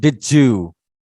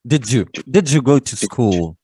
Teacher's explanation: So d sound and y sound will become j sound.